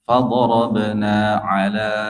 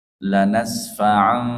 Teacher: diakhiri dengan huruf mim sukun bertemu fa. Ini tidak ada ikhfa di situ. Tidak ada dengung